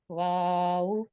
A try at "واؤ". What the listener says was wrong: ابھی بھی گول نہیں ہوئے. واؤ.